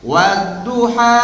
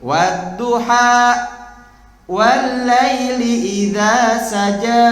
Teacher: kalau dirujuk dalam ilmu makhraj, dia menambahkan huruf hamzah sukun di akhirnya